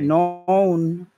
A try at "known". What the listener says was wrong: Okay.